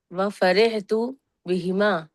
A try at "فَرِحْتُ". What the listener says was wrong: فرحت بہما، را کے نیچے زیر جب پڑھیں گے مجهول نہیں پڑھنا، فری ری بولنا، فرے نہیں بولنا، فرحت نہیں بولنا، فرحت.